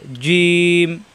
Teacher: এটা জিম, নিচে নক্তা জিম, নক্তা না থাকলে হা, এই নক্তার উপরে আসলে হয়ে যায় খ। এটা জিম, জিব্বার মাঝখানে উপরে তালুতে চাপ দিয়ে উচ্চারণ করতে হয়।